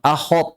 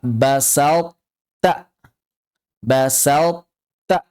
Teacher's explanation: sifat itbaq yang terdapat pada huruf th ketika dia bertemu dengan huruf ta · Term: idgham naqis